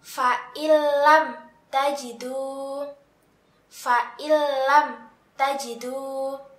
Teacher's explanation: Nah, di sini kita menemukan nun sukun bertemu dengan huruf lam. Maka kita harus memasukkan nun sukun tersebut ke dalam huruf lam, tetapi tidak disertai dengungan. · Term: idgham bila gunnah